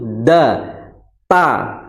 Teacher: ujung punggung lidah bertemu dengan tumbuhnya atau tempat tumbuhnya gigi seri atas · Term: makhraj ta